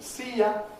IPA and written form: ˈsiː jə (see you)